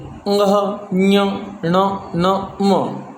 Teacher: इनको बोलते समय हमारे कंठ का तो प्रयोग होता ही है, साथ में हमारी नासिका का ज़्यादा प्रयोग होता है, इसलिए ये हो गए नासिक्य।